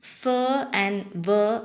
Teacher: in the production of fur and ver in English, the lower lip is brought towards the upper row of teeth